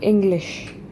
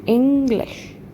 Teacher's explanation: First syllable is stressed. Second syllable is slightly de-stressed.